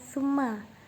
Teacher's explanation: Cara membaca guna di sini adalah huruf mim ketika dibaca harus didengungkan antara 2 sampai 3 harokat.